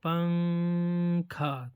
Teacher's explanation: بھی نون ساکن اور تنوین کے بعد ظاہر ہوتا ہے تو نون کی آواز غنہ کے ساتھ سنائی دیتی ہے، اسے اخفا کرنا کہتے ہیں